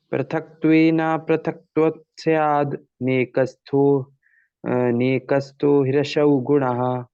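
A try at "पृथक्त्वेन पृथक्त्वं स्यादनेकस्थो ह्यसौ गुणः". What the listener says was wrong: मिला के पढ़ना, स्याद् अनेक, अनेक है वो।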